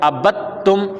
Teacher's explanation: اور با کو تا سے ملا دیں گے، دال ختم کر دیں گے